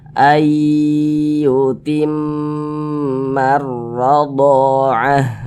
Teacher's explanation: maka cara bacanya diunahkan jadi suaranya kita tahan kita panjangkan sejenak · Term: gunah musyaddadah